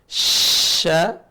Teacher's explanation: Sya, tengah lisan ketemu langit-langit. Ini lisan, ujungnya, tengahnya, pangkalnya ke langit-langit. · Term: huruf shin